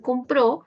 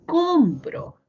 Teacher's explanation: podría ser compró, pero si movemos la sílaba tónica podría ser compro